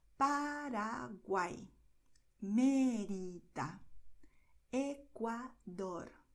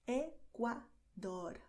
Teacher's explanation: the tongue does D with a lot of contact and slowly, and then does dor. This R at the end is really quicker, okay?